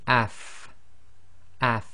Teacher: you should really be able to feel your teeth coming together your upper teeth coming together with the inside of your bottom lips